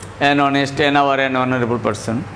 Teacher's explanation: there are some use of H where H remains silent